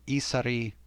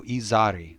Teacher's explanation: isari so and the and the document itself says isari but just a slight change from isari to izari so just voicing that middle sound that one little changed right that turns the word from meaning